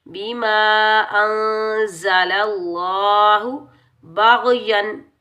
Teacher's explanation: याद रखें, जब भी लफ्ज़ अल्लाह से पहले ज़बर और पेश आ जाए तो लफ्ज़ अल्लाह को हमने मोटा पढ़ना है, और लफ्ज़ अल्लाह से पहले ज़ेर आ जाए तो लफ्ज़ अल्लाह को हमने बारीक पढ़ना है। अब ज़बर आ रहा है तो लफ्ज़ अल्लाह को हम मोटा पढ़ेंगे · बीमा अंज़लल्लाहु बाग़यन, बा के ऊपर ज़बर, बा को हम गैन साकिन के साथ मिलाएंगे और गैन को हम मोटा पढ़ेंगे, बगैर खींचे पढ़ेंगे।